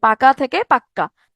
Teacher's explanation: ব্যঞ্জন দ্বিত্ব, যখন কোনো কিছু জোর দেওয়ার জন্য ব্যবহার করব তখন ব্যঞ্জনের দ্বিত্ব উচ্চারণ হবে